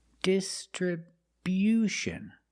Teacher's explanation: We move the stress to the first and third syllables.